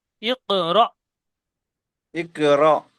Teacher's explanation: হামজার উপরে সাকিন এসেছে, সেই জন্য করে আজি ইকরা একটু ঝাটকা মতন হবে